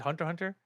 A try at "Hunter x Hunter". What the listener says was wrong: I don't think you pronounced the X